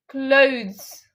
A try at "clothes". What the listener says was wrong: Not clothes. You're making the W sound too much prominent. It's basically blended, okay?